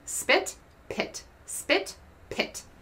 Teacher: Put your hand in front of your mouth and say spit, pit, spit, pit. You feel that there's that big burst of air when you say pit, but there's not a comparable burst of air for spit